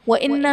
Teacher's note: وَإِنَّ میں نون مشدد ہے یہاں پر غنہ کریں گے